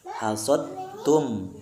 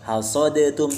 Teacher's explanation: Jadi huruf dalnya masuk kepada huruf ta tanpa kita bacakan huruf dal lagi.